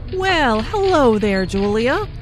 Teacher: notice the emphasis on hello which shows that did not expect to see julia